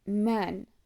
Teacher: this is also a voiced sound but it's a nasal sound which means the air passes through the nose along with the mouth